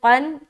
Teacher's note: क़ाफ़ दो ज़बर क़न मोटा करते हुए